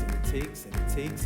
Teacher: keeping the /æ/ vowel intact, but dropping the D